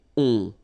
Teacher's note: so you don't hear any N, so it's really on